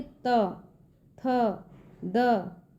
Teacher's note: ऐसे वर्ण जिन्हें बोलते समय जीभ दांतों को छूता है उन्हें दंत्य वर्ण कहा जाता है।